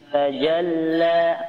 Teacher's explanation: di sini lamnya ditekan karena ada tanda tasdid